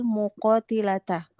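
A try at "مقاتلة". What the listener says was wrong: Masdar itu muqatalata. Muqata bukan muqati.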